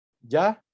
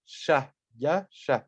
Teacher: la ya tiene su forma sorda en la sha